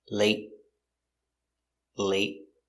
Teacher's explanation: and late is a stop t